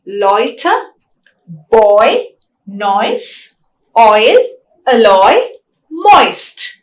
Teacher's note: oi is again a fronting diphthong because the tongue glides towards the front vowel E. It's also a closing diphthong because E is also a closed vowel.